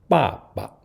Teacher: changing the second 爸 from its original fourth tone to the neutral tone